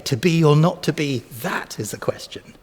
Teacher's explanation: the flow of iambs these weak strong syllables